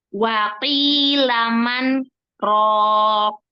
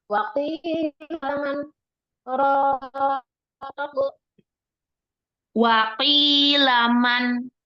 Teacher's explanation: Man berhenti sejenak dari satu alif tanpa bernafas. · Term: sakta